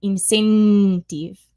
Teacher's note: an Italian might say incentive with a strong N there where we wouldn't